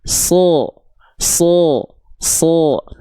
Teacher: Huruf shad itu ketika dia berharakat baris atas dia akan terdengar seperti vokal seperti vokal o. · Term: huruf tebal